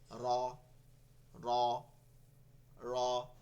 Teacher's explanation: জিহ্বাটা একটু ঘুরে গিয়ে তালুতে লাগতেছে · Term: রেফ র